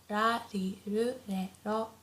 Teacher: the R sound is not as harsh as in English, so it's not like r, not like R, but it's very soft in between L and R.